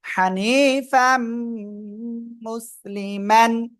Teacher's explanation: ইদগামে বাগুনার অক্ষর ইয়া মিম নুন এই চারটার একটা অক্ষর দেখেন মিম আসছে গুন্নার সাথে মিলে পড়তে হবে